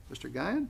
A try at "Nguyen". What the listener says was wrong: Nguyen? No, leave it, Nguyen, drop the G. Nguyen. G. silent,